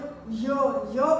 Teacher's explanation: य बोलते हैं तो पूरी तरह से जीभ जो है टच नहीं कर रही, हल्का सा जैसे स्पर्श करती है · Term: अंतस्थ व्यंजन